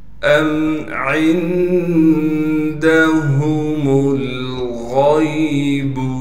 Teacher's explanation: عین کو نون سے ملائیں گے اس لیے کہ نون ساکن ہے اور نون میں اخفا یعنی غنہ کیا جائے گا · حمزہ کو میم سے ملائیں گے بغیر غننے کے، اس لیے کہ میم ساکن ہے